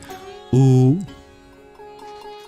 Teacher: Or or if we shifted to another place in our mouth to make the same quality of sound, like our lips, we'd make ooh. That'd be a voiced sound there without any occlusion or aspiration.